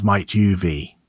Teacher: And might have becomes might uv. The word have is almost never stressed here, and it reduces to a schwa.